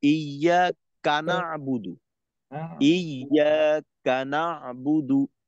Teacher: কাফটাকে পরের সাথে যুক্ত না করে ইয়ার সাথে যুক্ত রাখা